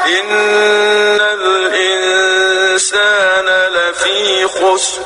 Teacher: نون ساکن کی آواز کو ناک میں چھپا کر غنہ کے ساتھ پڑھیں گے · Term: اخفا